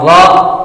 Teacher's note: जुबान की नोक और मुकाबिल के तालू से अदा होता है